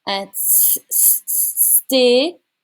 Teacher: There's no TH sound in French. It becomes a T sound.